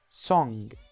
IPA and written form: sɒŋ (song)